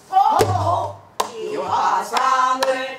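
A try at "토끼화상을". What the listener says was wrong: 끼를 김세게 하지 말고 꼭 찍어. 토! 기화상을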